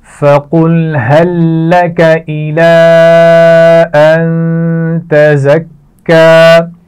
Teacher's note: نون پر غنہ کیا جائے گا, زا کو سختی سے پڑھا جائے گا اور کاف پر شد ہے تو اس کو بھی سختی سے ادا کیا جائے گا.